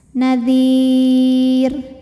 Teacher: Karena sebelum huruf ro yang disukunkannya ada ya mati. maka otomatis bacanya tipis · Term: tarqik